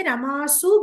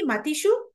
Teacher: అయితే రమా శబ్దానికి మాత్రం రమాసు అని మామూలు సకారం వస్తుంది, దంత్య సకారము. మిగతా అన్నిటికీ కూడా మూర్ధన్య సకారం